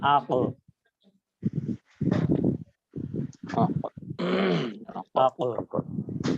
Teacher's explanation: কলকলার হরফ, যেটাকে একটু বাউন্স করতে হয় বা ড্রপের মতো শোনায়